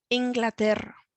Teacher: Soy de Inglaterra, and we can hear here with Inglaterra, we've got the R, the rolling of the R, we've got two R's there